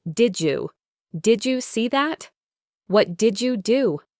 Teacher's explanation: in fast natural speech, these two sounds blend together to make a J sound like in the word juice